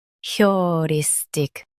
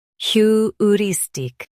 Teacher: Emphasize ris in US and your in UK. Keep tick soft.